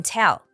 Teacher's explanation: the stress shifts to the next word instead